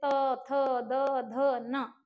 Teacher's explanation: जीवा जो है वो हमारे दांतों को क्या कर रही है स्पर्श कर रही है